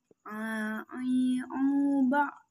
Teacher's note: Huruf selanjutnya adalah ain. Cara melafalkan huruf ain adalah keluar dari tengah tenggorokan, sama dengan huruf a.